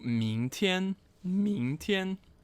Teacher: second tone, first tone, meaning tomorrow